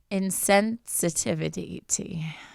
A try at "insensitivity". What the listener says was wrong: You said two T's.